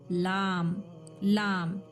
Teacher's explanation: फिर देन देखिए, जबान की नोक और अंदरूनी मसोड़ों के हिस्से से, जो ये जबान लाम ऊपर के जो मसोड़े हैं ना लेफ्ट साइड के, उधर जाके जबान का किनारा टच करें, ठीक है। जबान का किनारा ऊपर के मसोड़ों के साइड टच करें, जिससे एक हरूफ निकलेगा लाम